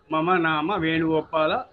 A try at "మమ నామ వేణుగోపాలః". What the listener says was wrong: వేణుగోపాల విసర్గలు చెప్పాలి చివరిలో.